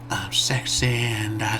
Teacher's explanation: They do the scrunch face to make their S sound like SH